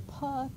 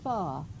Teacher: Voiceless bilabial plosive becomes a voiceless labiodental fricative in word initial position.